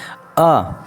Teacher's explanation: जिन स्वरों के उच्चारण में मुख द्वार आधा खुलता है · जब हम अ कहते हैं तो हमारा होंठ आधा खुलता है। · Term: अर्ध विवृत, अर्ध विपरीत